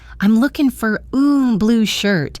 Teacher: Your response was, "I'm looking for a blue shirt." Here, the important stressed words are looking, blue, and shirt. The other words, I'm and for a are unstressed and spoken quickly.